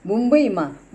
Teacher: એવી જ રીતે ટંટોમાં, ઘંટમાં ણનો ઉચ્ચાર થાય છે, વંદનમાં નનો ઉચ્ચાર થાય છે, મુંબઈમાં મનો ઉચ્ચાર થાય છે. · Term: અનુનાસિક વ્યંજનો